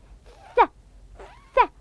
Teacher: لاحظوا كيف اللسان يخرج قليلا بس طرف بس بسيط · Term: حرف الثاء